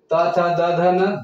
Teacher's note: त थ द ध न दंत से उच्चारण है, दंत का सहायता से उच्चारण होएला।